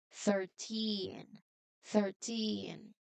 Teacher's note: your voice must be strong and loud enough on the last part, especially for the teen. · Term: stress on the end